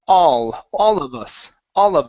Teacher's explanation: So instead of saying all with an O sound, it's ah. Open up the mouth wide.